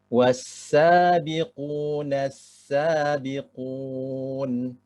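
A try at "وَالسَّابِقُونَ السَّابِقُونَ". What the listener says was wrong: Sinnya kayak masih mendengar kayak sa. As. Kayak lidahnya kayak nempel ke ujung. As.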